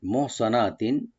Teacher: মহ হাটাকে একটা আমরা হামস করবো এখানে, সোয়াটাকে ডিপ করে মহ সোয়া বলবো, সিন যেন না হয়